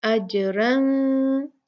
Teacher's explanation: हम यहाँ पर नून को खुफिया रख रहे हैं, नून का इख्फा कर रहे हैं। अजरन, हम अजरन नहीं पढ़ेंगे, अजरन 2 काउंट गुन्ना होगा क्योंकि फा आया है।